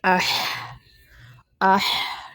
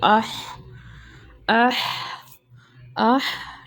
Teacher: ہا کی جو آواز ہے، حلق کے جو ہم سینٹر سے نکالتے ہیں، ٹھیک ہے، اس کی آواز کو واضح کرنا ہے، حمزہ کی آواز کو بھی واضح کرنا ہے اور ہا کی بھی آواز کو، اح، اح، اح، ٹھیک ہے؟